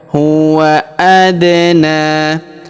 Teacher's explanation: huruf da berharakat sukun maka kita pantulkan atau kita qalqalahkan